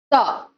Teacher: त के उच्चारण के समय क्या होता है? स्वरतंत्रियों में कंपन नहीं होता। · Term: अघोष